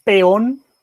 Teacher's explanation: se separan porque son dos vocales abiertas